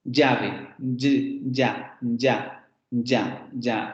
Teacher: Después vendría el fonema fricativo palatal sonoro, ¿sí? Fonema fricativo palatal sonoro, que es el fonema de yo-yo